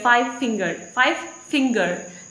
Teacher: stress is on the finger, not on the five.